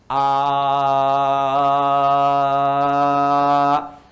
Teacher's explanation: kalau huruf hamzah, a dengan h itu satu makhraj, yaitu bagian kerongkongan bagian bawah